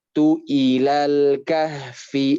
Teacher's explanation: Terus kita lihat lagi tu-nya tidak ada tanda panjang. Berarti ketika nanti menyambung ke kata setelahnya tidak dipanjangkan.